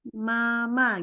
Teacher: keluarnya itu adalah dari antara dua bibir. Antara dua bibir, yang bibirnya itu dirapatkan, yang dirapatkan adalah bagian perutnya, perut bibir. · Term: huruf mim